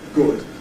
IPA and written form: gʊd (good)